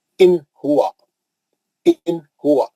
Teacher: नून को जल्दी पढ़ेंगे, नून का गुन्ना नहीं करेंगे। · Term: इजहार